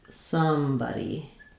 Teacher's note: In somebody, both the first part of the word, some, and the second part of the word, bud, have the vowel schwa. So both of those have the same sound.